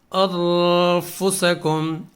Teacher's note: ہم قدر غنہ کے ساتھ اس کو ہم پڑھیں گے، جیسے کہ چھپا کر تھوڑا سا اس کو پڑھتے ہیں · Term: اخفاء